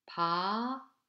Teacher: Basically it is voiceless stop sound with no aspiration and tenseness in word-initial syllable, but becomes lightly voiced between vowels as ‘b’